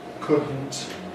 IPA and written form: ˈkʊdn̩t (couldn’t)